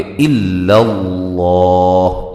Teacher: لفظ اللہ کو یہاں بھی موٹا ادا کریں گے